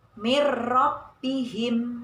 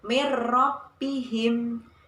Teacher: Karena ada nun sukun bertemu dengan huruf ro. Nun sukunnya tidak kelihatan dan dimasukkan ke dalam huruf ro tanpa berdengung. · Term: idgham bila gunnah